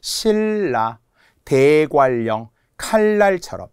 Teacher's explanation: 자, 그런데 유음화는 신라, 대관령, 칼날처럼 니은, 리을이 만나서 리을, 리을로 발음하는 거예요